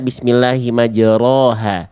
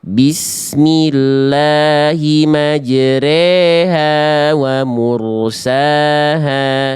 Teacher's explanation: Kita enggak baca bismillahi majroha, tapi kita baca juga bukan bismillahi majriha, tapi miring antara fathah dan kasrah antara vokal a dan vokal i. Jadinya kayak e jadinya ya. · Imalah itu artinya dibacanya antara fathah dan kasrah. Jadinya tengah-tengahnya e kayak e.